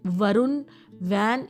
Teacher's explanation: इन words में आपका flat lip movement रहता है राउंडेड नहीं रहता